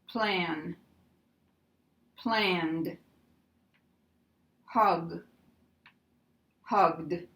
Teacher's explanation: here we have the D sound because we have a voiced N and a voiced G. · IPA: [ d ]